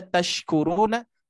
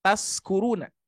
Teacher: gigi seri bawah ujung lidah menempel ke gigi si bawah sedangkan syin yang ada titik tiga itu e berada di tengah lidah